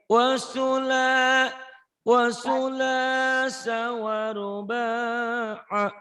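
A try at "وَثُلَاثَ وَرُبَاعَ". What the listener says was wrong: Su sama ba'nya pendek ya. Nih yang panjang nih saya lingkari ya.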